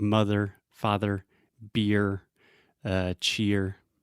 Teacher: these are what I call R colored sounds because the quality of the sound is colored it changes a little bit depending on how we use the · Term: ER sound